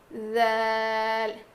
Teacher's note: جب ہم ذال ادا کریں گے تو ہماری زبان کی نوک جو ہے وہ سامنے کے دانتوں کے کنارے کو لگے گی اور تھوڑی سی زبان کی نوک باہر نکلے گی